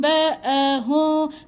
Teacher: Okey, mim mati bertemu dengan ba. Hum ni tak boleh tutup rapat. Renggangkan sikit, dengung 2 harakat.